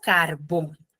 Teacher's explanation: Carbón tiene la mayor fuerza de voz en la segunda sílaba, que es la última sílaba, bon. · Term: aguda